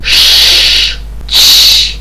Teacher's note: звуки ш та ч - це тверді приголосні глухі їх вимовляємо без допомоги голосу